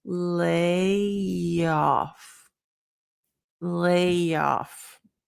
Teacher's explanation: That y sound, that's what we call a Y intrusion.